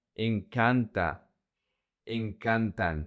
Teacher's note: Now remember what I told you the emphasis in the conjugation in the simple present doesn't go to the last syllable it goes to the second to the last. So the emphasis is going to be the syllable c an incant incant and we also use it for people, places, objects and verbs just like gusta.